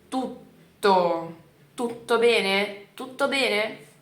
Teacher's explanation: Eu não consigo segurar o T, não dá, então a gente dá uma travada e depois continua a palavra